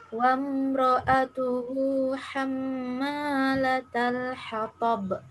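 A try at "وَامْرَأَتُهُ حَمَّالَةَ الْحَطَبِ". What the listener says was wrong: Kurang lama. Hammalatal hatab. Ulang.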